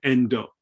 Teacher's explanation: when Japanese people speak a word like end they frequently say endo so the the final consonant gets over enunciated